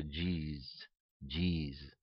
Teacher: the S sound can shift to the Z sound which is what happened in the case of the pronunciation of Jesus